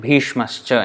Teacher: because the next word starts with cha, therefore Bhishmaha plus cha becomes Bhishmascha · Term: smooth transition